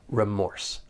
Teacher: sometimes I hear people stress the first syllable and I hear that long e sound like re